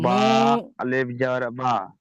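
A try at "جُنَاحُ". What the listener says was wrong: না না না, বা নয়। বা তো নিচে যদি নক্তা থাকে তবে বা হবে, এ তো ওপরে একটা নক্তা।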